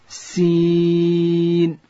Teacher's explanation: سین ادا کیږي د ژبې سر به د لاندې زامې د مخ دوه غاښو سره ورسره یو ځای د لوړې زامې د مخ دوه غاښونه